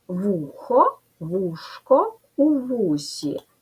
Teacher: Чергуються звуки х, ш, с.